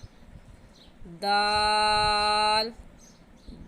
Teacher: ज़बान की नोक ऊपर वाले दांतों की जड़ में लगाने से दाल निकलता है।